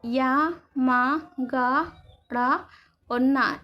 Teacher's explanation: इनका उच्चारण नासिका से किया जाता है, मुख और नासिका से किया जाता है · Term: अनुनासिक वर्ण